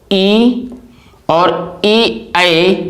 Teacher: ई और ए ऐ स्वर जो हमारे हैं वो हमारे जीभ के अगले हिस्से से उच्चारित होते हैं। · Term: अग्र स्वर